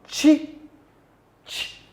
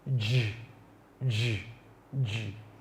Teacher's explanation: The first sound is voiceless, while the other sound j is a voice sound.